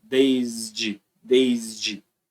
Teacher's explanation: quando você pronuncia o s no desde vibra